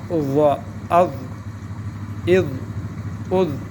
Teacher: اس میں ضا میں زبان کا جو سرا ہے اوپر کے سامنے کے دانتوں کے سرا نیچے سے لگے گا، سرا یعنی زبان کا سرا، دانتوں کا سرا.